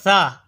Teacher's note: ثا کا مخرج زبان کا سرا اور اوپر کے دانتوں کے اندرونی کنارے سے ثا ادا ہوتا ہے